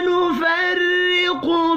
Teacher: را کو زیر کی وجہ سے باریک پڑھنا ہے